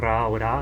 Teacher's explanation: O R também vai ser sempre vibrante, simples ou múltiplo, como um trill ou um tap, Ra ou Ra. Nunca é pronunciado gutural Ra, como no alemão padrão.